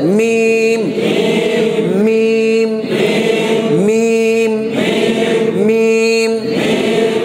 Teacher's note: মিম দুই ঠোঁটের শুকনো জায়গা থেকে